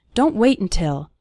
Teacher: We almost continue the word wait right into the N sound.